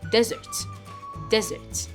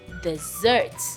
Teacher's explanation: if this is a noun, I'll put more emphasis on the first syllable. And if it's a verb, I'll put more emphasis on the second syllable.